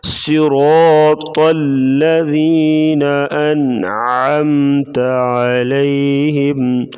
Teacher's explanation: صاد کو موٹا پڑھیں گے، را کے اوپر زبر ہے تو را کو موٹا پڑھیں گے، اور طا کو بھی موٹا پڑھیں گے